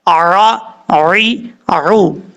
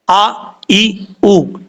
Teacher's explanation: یہ لفظ ہے تعبدون، یہاں تا کے بعد عین ہے، عین جو ہے وہ نارمل طریقے سے پڑھا جاتا ہے، حمزہ جو ہے وہ سختی سے پڑھا جاتا ہے